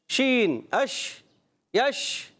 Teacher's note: ज़बान के दरमियान और तालु के दरमियान से होता है